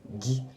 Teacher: Gi is like rising up and then holding it and then plosive.